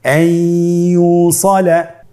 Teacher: ইয়া হরফটি হলো ইদগামে বাগুন্নার হরফ। তাহলে নুনকে আমরা পরবর্তী হরফ ইয়ার সাথে মিলিয়ে গুন্নার সহিত পড়ব।